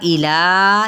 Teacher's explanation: इला ये 4 हरकत लंबा करेंगे